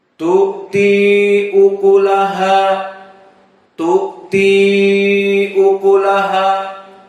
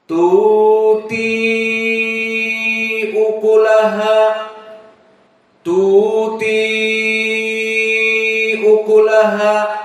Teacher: Qiraah Hafs, tu'ti ukulaha, tu'ti ukulaha. Adapun qiraah Wars, pertama mad, tidak ada hamzah, dan yang kedua panjang.